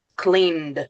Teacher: You don't pronounce the e, you only pronounce the d.